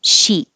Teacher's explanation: I released the K.